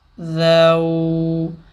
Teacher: ذال واو زبر ذو، ہونٹ واو پہ گول ہوں گے، زبر والے حرف پہ نہیں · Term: واو لین